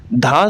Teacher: सघोष महाप्राण दंत है